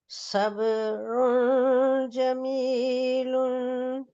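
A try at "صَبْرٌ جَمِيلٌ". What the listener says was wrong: جی سواد موٹا ہے، تھوڑا مفخم پڑھیے گا.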